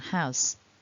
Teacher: has, although it's written with an S, actually ends with a z, a voiced sound, because the vowel a is a voiced sound.